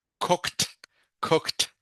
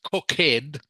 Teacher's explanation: the e d sound is pronounced like a t